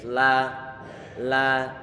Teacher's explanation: Karena huruf lam dia sifatnya adalah istifal. Pengucapannya lam pangkal lidah dan juga pertengahan dia turun ke bawah sehingga dia tipis